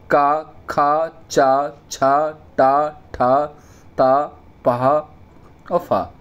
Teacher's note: जिन स्वर तंत्रियों में कंपन या झंझट नहीं उत्पन्न होती उन्हें क्या कहते हैं, हम अघोष व्यंजन कहते हैं